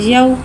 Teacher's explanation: वाव साकिन है, वाव साकिन से पहले ज़बर आ रहा है, वावलीन हो रहा है, लिहाजा वावलीन को बगैर खींचे बगैर झटका दिए नरमी से मारूफ पढ़ेंगे